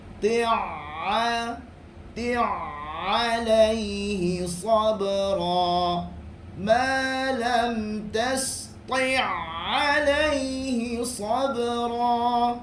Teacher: Jangan putuskan suara sebab ain ini adalah sifat dia tawassut, yakni tidak tertahan dan tidak terlepas. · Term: ain yang bersabdu